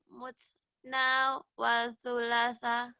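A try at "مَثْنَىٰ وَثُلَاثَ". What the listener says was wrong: Ini kayaknya bukan musna ya, harusnya masna. Masna wa sulasa. Bukan musna, ini Masna. Masna. Masna wa sulasa.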